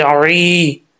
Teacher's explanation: आइन की आवाज़ में, ऐसा ना हो कि आइन को पढ़ते हुए हमज़ा की आवाज़ निकाल दें, ऐसा नहीं, ई नहीं पढ़ना।